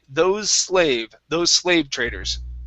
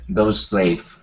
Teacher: when you have an S at the end, okay, and the next word starts with an S, you only pronounce one S sound, okay, even if they are different.